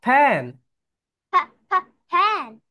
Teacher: যখন এফ উচ্চারণ করবে তোমাদের উপরের দাঁত নিচের ঠোঁটের সঙ্গে টাচ করবে, এফ এফ। The letter is F, The letter is F.